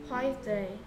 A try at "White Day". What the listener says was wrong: 화이트가 아니고 White Day W가 U H는 원래 흔데 아이고 흔데 소리 안 나고 I는 I 그래서 White